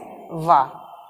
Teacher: दंतोष्ठ से उच्चारित होने वाला व्यंजन